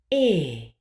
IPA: ɛː